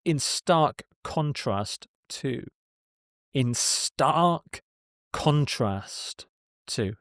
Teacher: Stress on contrast here.